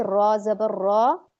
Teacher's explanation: लेकिन जबर और पेश में हैवी रहेगी